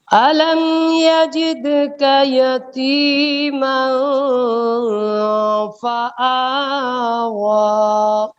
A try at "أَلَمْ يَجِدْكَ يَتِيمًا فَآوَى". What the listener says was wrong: نہیں فآ بھی باریک ہے، واو یہ اس کو پر نہیں کرنا، دونوں حرف باریک ہیں، توجہ کریے. أَلَمْ يَجِدْكَ يَتِيمًا فَآوَى وہ نہیں فآوى جی.